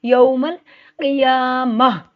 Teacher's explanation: क़ाफ दो नुक्तों वाला मोटा पड़ा जाता है